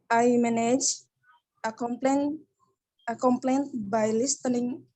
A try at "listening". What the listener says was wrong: Listening. Huruf T-nya nggak dibaca. By listening.